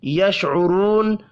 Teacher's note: شین ساکن پر قلقلہ نہیں کرنا، را کو پیش کی وجہ سے پر پڑھیں گے۔ واو مدہ ایک الف کے برابر کھینچ کر پڑھا جائے گا، وقف کرنے کی صورت میں نون ساکن پڑھیں گے۔